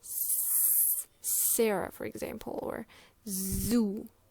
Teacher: you are putting your tongue against this hard place uh behind the top teeth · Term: alve